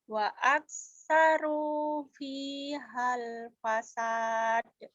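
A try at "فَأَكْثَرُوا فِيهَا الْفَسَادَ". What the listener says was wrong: Fa bukan wa atuh. Dinya panjang atuh. Fa'aktsaru fihal fasad.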